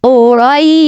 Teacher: রই এখানে এক আলিফ টেনে শিনকে সাকিন করতে হবে, কারণ জবরের বাম পাশেই জজমালা ইয়া লিনের হরফ।